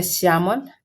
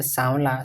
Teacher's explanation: तत्सम का तलव्य स तद्भव में दंत्य स बन जाता है